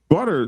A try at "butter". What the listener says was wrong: butter. No R.